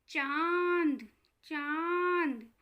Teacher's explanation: आवाज़ आ रही है, हमारी नाक और गले दोनों से हवा निकलती सी हमें लगती है। · अनुनासिक या चंद्र बिंदु, ये जो आधे चांद की जैसी दिखती है ना, ये होती है अनुनासिक, और इसको हम चंद्र बिंदु भी कहते हैं, पर व्याकरण की भाषा में इसको अनुनासिक ही कहा जाता है। इसका उच्चारण करते टाइम जो आवाज़ आती है वो आती है नाक और गले से।